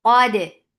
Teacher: Qad, qaf is heavy for fatha upon jaws attached. Dal, dal will get sifa of qalqala, and dal will be light